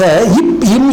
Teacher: அது ஆக இப் இம் இரண்டு மெய்களும் மேல் இதழும் இதழும்னா உதடுன்னு அர்த்தம் மேல் உதடும் கீழ் உதடும் பொருந்துவதாலே பிறக்கும்